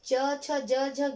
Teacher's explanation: जब च छ ज झ ज्ञ बोलते हैं तब वो तालु के माध्यम से बाहर निकलती है।